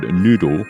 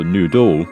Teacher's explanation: So you don't get weird sounding words with the word noodle. The stress is on the first half, on the first syllable.